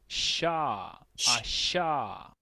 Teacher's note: Y nótese que son diferentes, pero se articulan en la misma zona. Son sonidos posalveolares, significa que la lengua se ubica después del alvéolo. El alvéolo es la carnita que está aquí, digamos, después de los dientes superiores.